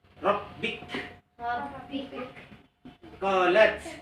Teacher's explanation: Itu mahmus. Ka dengan ta itu mahmus. Huruf yang harus di akhirnya dihembuskan suara.